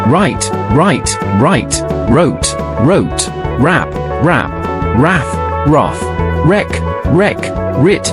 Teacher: Alors quand elle est au début d'un mot ou dans un groupe de consonnes, la lettre R, en anglais britannique, se prononce comme s'il y avait une lettre W invisible placée juste avant la lettre R ou derrière elle. C'est donc comme si vous prononciez la combinaison des lettres WR. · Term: la lettre R british